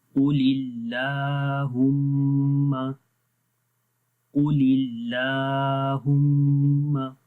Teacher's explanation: اللہ کے نام سے پہلے زیر ہے تو یہاں پر جو الف ہے اس کو ہم کیا کریں گے باریک پڑھیں گے.